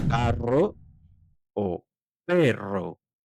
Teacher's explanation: La doble r siempre suena fuerte y vibrante.